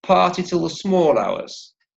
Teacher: there's a stress on the word party